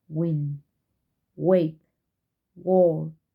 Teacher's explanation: bilabial, approximant, and voiced.